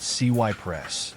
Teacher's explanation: the emphasis is on the first syllable so it's pronounced Cy press with a short eye sound how